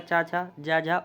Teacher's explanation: तालव्य जिनका उच्चारण तालू से होता है